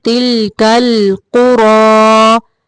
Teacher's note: قاف کو موٹا پڑھنا ہے، را کو بھی موٹا پڑھنا ہے